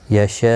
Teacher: یہاں پر مد متصل ہے تو وقف کی صورت میں جب حمزہ ساکن پڑھا جائے گا 3 سے 5 الف کی مقدار کے برابر کھینچ کر وقف کیا جائے گا. مد العارض وقفی ہوگا.